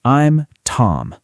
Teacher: Notice how Tom is clear and slightly longer than the other sounds